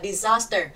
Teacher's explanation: disaster, âm thứ hai là âm dài nên nó sẽ nhận trọng âm